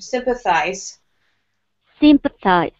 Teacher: when you're saying sympathize, here we keep the first syllable a little bit stronger